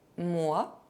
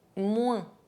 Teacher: If the letters OI are followed by N, they can be pronounced [wε̃].